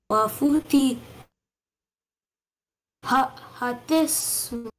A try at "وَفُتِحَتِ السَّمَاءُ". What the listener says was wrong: No, not who. It is u. Say u. And you have to do not ignore sin fathasa.